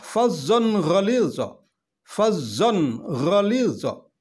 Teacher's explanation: Di sini ada tanwin bertemu dengan huruf ghin, maka hukumnya adalah izhar, dibaca jelas.